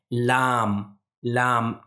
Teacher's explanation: हमारे जो जबान है वो ऊपर वाले जो दांत हैं उसके जड़ से मिलकर अदा होता है